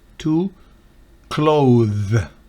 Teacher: No es la D normal, que es una D dental, la D normal, que usted sabe está detrás de los dientes. Esta es una D interdental en la que la punta de la lengua sale entre los dos dientes.